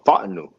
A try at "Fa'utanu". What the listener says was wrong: It's too quick. It's too quick, bro.